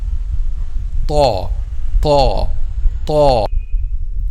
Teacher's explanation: the top side of the tip of the tongue touches the gums of upper 2 front incisors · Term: letter Ta